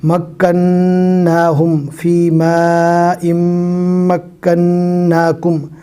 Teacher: میم اور نون تشدید والے ہیں، لہٰذا گنہ کر کے پڑھنا ہے